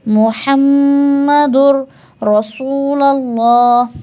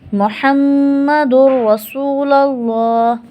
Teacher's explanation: دال مل جائے گا را سے، را پہ تفخیم ہوگی اور را پہ ہم غنہ نہیں کریں گے